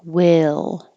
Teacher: now your tongue is staying pretty flat and just going up for the L